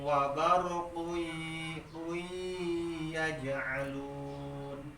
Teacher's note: Tanwin ngahareupan iya hukumna idgham bari idghamna idgham biguna hartina idgham biguna dengung kana irung